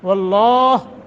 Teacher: واللہ وہ اور لفظ اللہ کو منہ بھر کے پڑھیں گے تفخیم